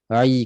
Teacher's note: Tidak menghidung. Jangan naik ke hidung. Ai. Jangan naik sengau bunyi. Ai. Clear, tak ada sengau.